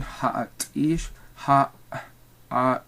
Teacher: you notice there the air is stopping in the throat, and that's what's happening, is that epiglottis needs to be closing so that you stop that air. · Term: glottals